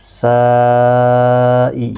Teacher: یہاں پر مد متصل ہے، چار الف کی مقدار کے برابر کھینچ کر پڑھیں گے